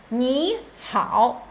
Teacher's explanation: the first third tone will become the second one